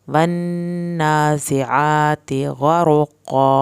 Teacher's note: आती आइन को हल्क से पढ़ना है। ता की ज़ेर को लंबा नहीं करना।